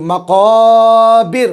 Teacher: रा के ऊपर जब जज़म आ गया तो उससे पहले ज़ेर आ गया, तो जो है ये रा बारीक हो जाएगी